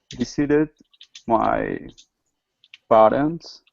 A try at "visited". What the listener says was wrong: Visited. Be careful. Your V.